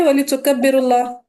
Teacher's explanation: وَلِتُكَبِّرُوا اللَّهَ سے را کو باریک کیجیے گا، لام جلالہ کو باریک نہیں کرنا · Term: ترقیق